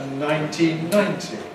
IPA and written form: ˌnaɪntiːn ˈnaɪnti (nineteen ninety)